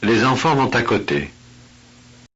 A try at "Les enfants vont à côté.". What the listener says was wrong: Vont. Pronounce the T. Vont à. Les enfants vont à côté. Les enfants vont à côté.